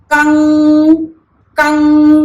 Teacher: अनुस्वार जो होता है उसको जब हम बोलते हैं तो जो साउंड होता है वो नोज से आता है। जैसे हम कंग कंग बोलते हैं तो क बोलने के बाद जो अंग वाला साउंड है वो कहां से आ रहा है?